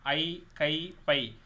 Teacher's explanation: ஐ, கை, பை என ஐகார எழுத்துக்கள் தனித்து வரும் இடங்களில் தனக்குரிய 2 மாத்திரை அளவில் முழுமையாக ஒழிக்கிறது.